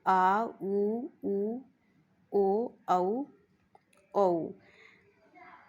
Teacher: जीव का पिछला भाग प्रयोग किया जाता है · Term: पशर